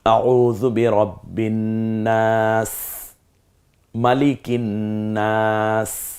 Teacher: সিনটা স্বাভাবিক একটু সিসি আওয়াজে উচ্চারিত হয় যেমন সাইকেলের পাম ছেড়ে দিলে যেমন একটা আওয়াজ হয়